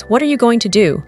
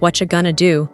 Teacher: Listen to the difference in rhythm. The textbook is staccato, da-da-da-da-da-da-da. Real life is flowing, da-da-da-da.